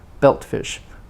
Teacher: compound main stress on belt t in belt is not released not belt fish because it's